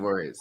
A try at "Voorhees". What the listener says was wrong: You pronounced weird. You had like an extra syllable.